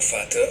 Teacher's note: vous entendez d'ailleurs que le V est prononcé comme un F